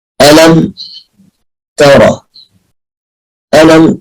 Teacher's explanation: عندي الميم ساكنة وبعدها حرف التاء إظهار، وبعدين عندي ترى ترى، التاء مرققة، الراء مفخمة.